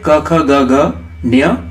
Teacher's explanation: क वर्ग के जितने भी होते हैं सबका उच्चारण होता है कंठ से